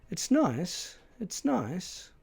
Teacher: there are two pitch contours, both falling rising contours, and both falling on the word nice